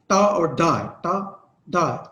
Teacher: Articulated by the blade और the tongue coming in the contact with the alveolar ridge. इसमें alveolar ridge मैंने जैसे आपको बताया था, बिल्कुल दांतों के ऊपर वाली जगह होती है। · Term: एल्व्यूलर साउंड्स